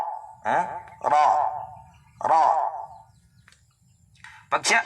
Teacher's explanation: pag siya ay maftuha ang vowel niya ay maftuha, ay makapal siyang bigkasin tulad ng ra.